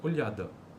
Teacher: a semivogal corresponde à palatalização da consoante lateral